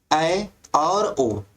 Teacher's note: ऐसे स्वर हैं जिनके उच्चारण काल में हमारा जो मुख द्वार होता है वो आधा बंद रहता है · जिन स्वरों के उच्चारण में मुख द्वार आधा बंद रहता है, यानी जैसे आप उच्चरित करोगे तो उसमें हमारा मुख द्वार क्या होगा, आधा बंद रहता है। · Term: अर्ध संवृत